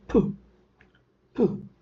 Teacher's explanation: When it comes to manner, for the same sound, that is pa, you have closed the lips, but the sound comes out as pu. When you release the air suddenly, when you open your lips suddenly, resulted into production of the sound pu.